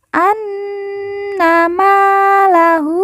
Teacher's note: Ma kita baca panjang 2 harokat karena di depannya terdapat alif.